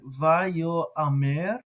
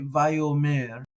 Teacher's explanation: So here, if we did pronounce it, it would be like vayo amer, and most people would just say vayo mer and blend that aleph in with the holim